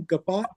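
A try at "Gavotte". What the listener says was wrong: I pronounce it Gavoda because in German you pronounce the E at the end. The Gavota is how I pronounce it.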